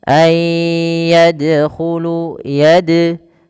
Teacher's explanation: Kemudian pelafal dal, huruf dal di sini adalah bacaan qalqalah yang dimana dalnya harus mantul, tidak dibaca ayyadkhulu.